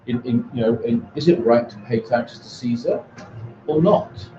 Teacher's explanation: that glide downwards indicates completion because there are only two options: is it right or not?